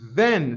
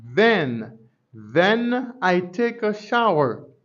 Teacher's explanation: On a regardé comment on prononce, on dit then, c'est même son TH qui a une vibration, voiced sound.